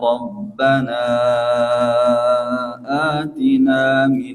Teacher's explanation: mad bacaan panjang itu ada pada kata Rabbana, kemudian bertemu huruf hamzah atina. Ini dibaca 4 harokat, namanya mad jaiz munfasil.